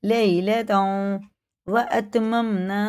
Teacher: اور یہ ادغام میں واو ہے، تنوین کے بعد واو پہ شد ہے تو یہ گنہ کر کے پڑھیں گے